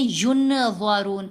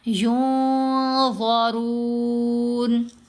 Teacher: نون کو ظاہر نہیں کریں گے، نون کو ناک میں چھپائیں گے اور اس پر غنہ بھی کریں گے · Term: اخفا